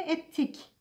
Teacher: Ve ettik olmuş. Yani buradaki T sert sesi D sesini kendisine benzetmiş ve T'ye dönüştürmüş. Buna da ünsüz sertleşmesi ya da ünsüz benzeşmesi diyoruz.